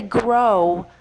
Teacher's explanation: when you say grow, your mouth ends up in a rounding position that is like a W